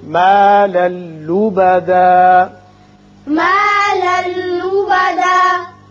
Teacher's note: لام پر 2 زبر تنوین ہے، آگے لام ہے، یہاں ادغام بغیر غنہ ہوگا